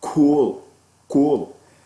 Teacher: Before you say oo, you notice as you say cool, your lips are going to be ready to say the oo, so they will make the k rounded